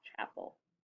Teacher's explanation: we don't really hear the E, we just hear the L, chapel. That's what makes it a schwa.